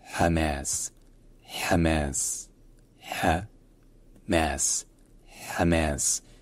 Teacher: Et donc, en arabe, on prononce ça non seulement avec le premier H qui est prononcé ainsi, et également la deuxième syllabe, la deuxième voyelle qui est prononcée de manière plus longue